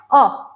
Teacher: अ में जो आवाज है वह कहां से निकलती है जीभ के मध्य भाग से